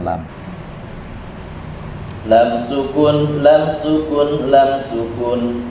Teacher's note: perhatikan di sini untuk lam ini lidahnya yang warna kuning nih Sisi lidah bagian depan nempel ke gusi